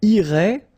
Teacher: final T not pronounced